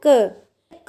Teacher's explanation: क हमारा क्या है? अल्प प्राण है, क्योंकि इसमें बोलते हुए सांस हमारी कम लग रही है, हवा मुख से क्या हो रही है? कम निकल रही है।